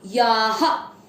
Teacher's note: यहाँ पर आ की मात्रा है तो विसर्ग को पढ़ेंगे हा